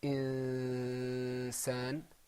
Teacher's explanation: Now this hukm here is ikhfa. Okay? The noon is hiding a little bit.